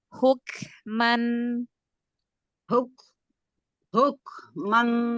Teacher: Jangan membuatnya terlalu panjang ee nun sukun izharnya